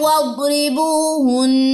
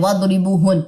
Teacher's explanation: وقف کی صورت میں بھی نون مشدد کا غنہ کرنا نہ بھولیے گا